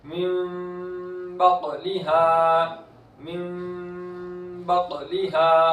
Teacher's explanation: क़ाफ हुर्फ़ क़लक़ला में से है, आवाज लौटती हुई वापस आएगी।